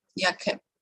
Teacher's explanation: the voiceless velar ka, plosive ka is being dropped word finally when it is followed by another morpheme begun with the velar plosive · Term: Consonant deletion